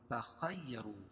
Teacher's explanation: خا کو موٹا پڑھیں گے کیوں؟ حروف مستعلیہ میں سے ہے